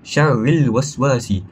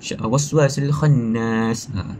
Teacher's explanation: kedua-dua ini kita perdengarkan huruf lam tersebut dibaca dengan jelas, yakni izhar. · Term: alif lam qamariyah